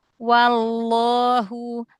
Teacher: Tebalkan lagi lafzul jalalahnya, angkat lagi pangkal lidahnya.